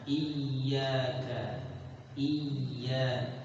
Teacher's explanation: karena bukan ya idgham, ianya ya tasdid murni. Ada sedikit penekanan.